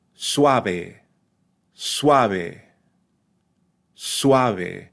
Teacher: the first syllable has the U and the a pronounced together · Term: dip thong